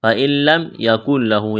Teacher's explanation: یہاں بھی نون ساکن کے بعد لام ہے، ادغام کریں گے بغیر غنے کے